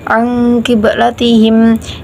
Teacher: ada dua bacaan yaitu bacaan Ikhfa karena ada Nun bertemu dengan Q dibaca dengung dan ada bacaan Qalqalah karena adanya ba Nah di sini Qalqalah